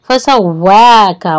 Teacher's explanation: वाव होंठों को गोल करेंगे और खड़ी हरकत है तो 2 काउंट करेंगे, एक अलीफ के बराबर।